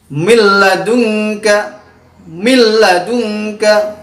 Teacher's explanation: Apabila ada nun sukun bertemu dengan huruf lam yaitu harus dimasukkan dengan tidak mendengung yaitu milladunka milladunka perhatikan milladunka harus dibaca dimasukkan dengan tidak mendengung